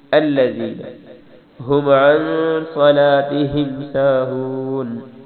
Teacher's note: ہم پہ غنہ نہیں کرنا کیونکہ آگے عین ہے، عن پہ غنہ کرنا ہے